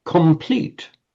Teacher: Put those two together and by santi what happens when one word meets the other? The N wants to become an M because it's immediately before a P.